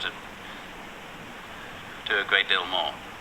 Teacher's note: the r is barely noticeable · For the general British, the vowels are longer, more rounded.